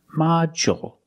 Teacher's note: With module, the stress is on the first syllable. So the second syllable is short. Module. And we see the D makes the J sound, like juice and jump.